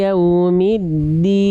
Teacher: jangan ada percikan nafas dari huruf Dal